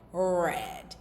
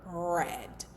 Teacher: And so in English when we're pronouncing R, our tongues are slightly raised and curled, but they do not touch the roof of our mouth